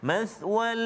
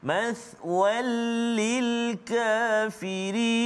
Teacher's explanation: tanwin itu ke dalam lam tanpa dengung, tak boleh dengung. · Jangan kita baca mathwal, lama pegang kat situ, tak boleh juga. Jelaskan bacaan kita, masukkan tanwin itu ke dalam lam. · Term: Idgham bila gunnah